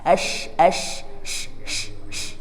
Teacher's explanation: syin itu bunyinya banyak hembusan anginnya banyak ya menabrak sela-sela gigi